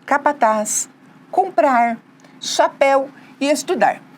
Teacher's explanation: todas elas têm a última sílaba a sílaba mais forte que a gente chama de sílaba tônica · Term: oxítonas